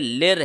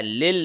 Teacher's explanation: یہ دوسرا جو لام ہے اس پہ کوئی سائن نہیں ہے، یہ سائلنٹ ہے، تو یہ لر ہے، لل نہیں ہے. للرجال لام کو اس را کے ساتھ جوڑنا ہے، ٹھیک ہے، کیونکہ را کے اوپر تشدید ہے لہٰذا پچھلے لیٹر کے اوپر کوئی سائن نہیں ہے، یہ سکپ ہو جائے گا.